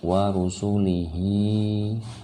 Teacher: Waw pendek, roh pendek, sin pendek, lam pendek, dan hi-nya panjang